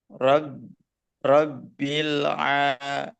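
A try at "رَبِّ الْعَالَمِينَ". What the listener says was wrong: Nah, ada mantulnya ya sedikit. Rabbil nah, itu la itu mantul. Jadi jangan dilepas. Biar nempel terus lamnya langsung ke ain. Pas ngelepasnya itu langsung ke ain. Robbil nah kayak gitu. Robbil kalau di slow motion. Robbil kalau langsung Robbil alamin. Jangan Robbil ada letnya dulu.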